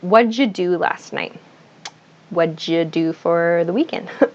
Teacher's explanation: it sounds like what did you what or it's like even even more reduced it sounds like waja in american english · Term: reduced form